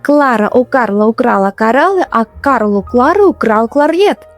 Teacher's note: These two sounds, r and l, are very tricky for many learners. Try to roll your r, but keep your l soft and light.